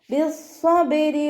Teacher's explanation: ബ കൽക്കലയുടെ ലെറ്റർ ആയതുകൊണ്ട് ഫുൾ സുക്കൂന് കൊടുക്കുക. റോ കെസ്റ ആയതുകൊണ്ട് താഴ്ത്തി ഉച്ചരിക്കുക.